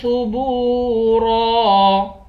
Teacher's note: با کو واو کے ساتھ ملا کر واو کو بھی ایک الف کی مقدار کھینچیں گے